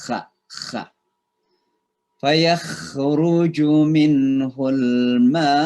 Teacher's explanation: Itu tenggorokan atas itu kayak udara bersentuhan dengan tenggorokan atas.